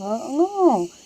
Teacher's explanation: अंग जब हम बोलते हैं तो हमारा नाक और मुंह दोनों से होता है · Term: अनुनासिक व्यंजन